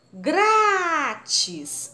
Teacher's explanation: O grá é a sílaba mais forte